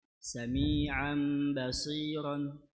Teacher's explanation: تنوين بالفتح منقلب لميم مخفاه عند الباء المفتوحة بغن حركتين